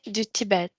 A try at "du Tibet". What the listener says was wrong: du Tibet. Oh, du Tibet. Prononce pas le T final.